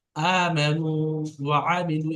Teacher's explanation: আইনটা কিন্তু গোলার ভিতর থেকে দিয়ে বের হয়